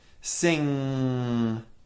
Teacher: with front of tongue freedom first make an NG sound o ng is made by the back of our tongue raising to touch our lowered soft palate blocking sound from entering the mouth and causing it to go through the nose